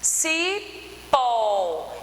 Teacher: e é acentuado por que terminou da polentinha é cipó então pó a gente pronuncia ele com a tonicidade maior · o pó, a gente pronuncia ele com a tonicidade maior, então ele é oxítona também e é acentuado porque terminou em O.